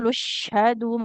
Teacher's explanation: huruf lamnya di sini pendek ya meskipun dia dhammah ketemu wawu karena ketemu dengan huruf bertasydid huruf sukun